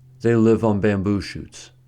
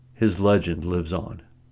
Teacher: in the first sentence on is a preposition so it is not stressed but in the second sentence on is an adverb so it is stressed